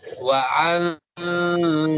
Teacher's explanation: Samar, bagaimana cara bacanya? Didengungkan, ya, didengungkan dan ditahan 2 harokat. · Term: ikhfa